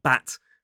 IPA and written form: bæt (bat)